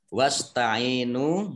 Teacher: Ain kasroh, ya sukun, mat tobi'i, nun sukun, nun domah, wawu sukun, mat tobi'i, masing-masing dibaca panjang 2 harokat.